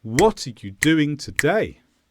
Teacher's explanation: i've stressed the word what here because what is the focus of my sentence